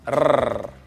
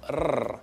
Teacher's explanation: Now, it's not like our British R, it's a rolled R. R. Technically called an alveolar trill.